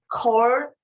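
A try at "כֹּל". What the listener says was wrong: Not core, coal. L.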